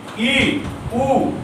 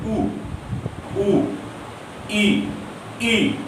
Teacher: जहां मुख लगभग बंद रहता है या बहुत कम खुलता है उसे हम समवृत कहते हैं